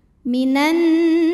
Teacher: Idgham syamsyi Minan kemudian nunnya berhukum ghunah musyaddadah karena Nun bertasdid cara bacanya dengung jadi bunyi n tahan sampai masuk ke hidung kurang lebih dua harakat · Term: ghunnah musyaddadah